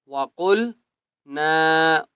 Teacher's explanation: قاف کو موٹا کریں گے، وَقُلْنَا، اور نون کو ایک الف کی مقدار کھینچ کر پڑھیں گے۔